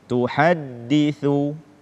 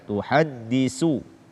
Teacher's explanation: tidak membaca tha dengan tepat atau menggantinya dengan sin